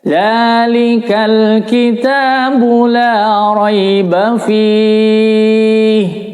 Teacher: La-nya dibaca panjang karena fathah diikuti alif ya